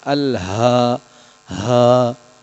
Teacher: الہاکم میں جو چیز دیکھنی ہے آپ نے ہا کو ادا کرنے کا دیکھنا ہے. ہا کو حلق کے آخری حصے سے ادا کرنا ہے